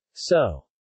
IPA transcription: oː